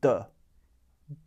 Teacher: U, which is a back vowel, immediately follows the D in the second word, so it's a back D sound, d. D, D.